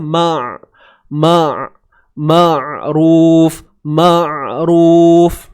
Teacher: Huruf mim baris atas ma, kemudian ain sempit kan ni tengah kerongkong kita.